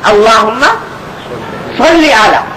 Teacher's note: صلی صاد سے موٹا کر کے نکالے